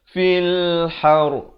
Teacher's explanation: Ra ni bila diwaqafkan dia jadi tebal.